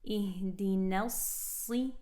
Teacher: Make sure to keep that noon nice and light. Don't let the heaviness of the sad color that noon. Ihdinelsi, sharp kasra.